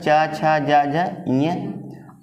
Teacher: जब इनका उच्चारण करेंगे तो जीव कहां लगेगी ताल में लगेगी ना च वर्ग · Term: तालु या तालव्य